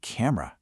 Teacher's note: You and I see the word camera and our brain says cam or uh three distinct parts. But a fluent speaker, they just say camera. That middle part just melts away into that schwa sound.